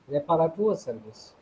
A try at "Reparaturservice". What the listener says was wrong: No, not on service, only on Reparatur.